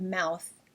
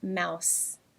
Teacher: struggles with the th sound and often produces the S sound instead